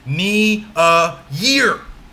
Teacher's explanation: our third anapest again starts with knee followed by a so those are our two unstressed syllables knee and a and then the word year that stressed